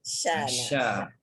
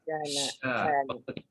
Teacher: Shin tu biar tengah lidah kita angkat ke langit. Tengah lidah.